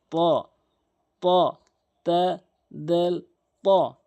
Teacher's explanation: ত তা দাল এর মতো ত এর উচ্চারণটি, এর নিয়মটি, অর্থাৎ জিব্বার আগা উপরে দুই দাঁতের গোড়ার সঙ্গে লাগাবেন।